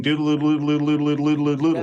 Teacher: Because when you make that L sound, phonetically, that's called a dark L. And the dark L, you actually have to change the shape of the back of your tongue. So you're drawing the tongue back, and the tip of the tongue becomes more distant.